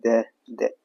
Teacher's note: द का उच्चारण स्थान दंत है।